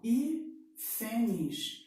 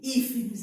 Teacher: Ela não tem nem a última, nem a penúltima, é a antepenúltima sílaba que é a mais forte. Essa daqui, hífenes, ela é uma proparoxítona.